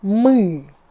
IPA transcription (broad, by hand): mi